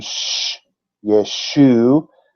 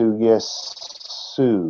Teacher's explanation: Why isn't it an SH if it's a transliteration? Because they don't have the SH sound in Greek. So it goes from sh, yeshu, to yesu, because the next thing is the OU, the oo sound, yesu, instead of yeshu.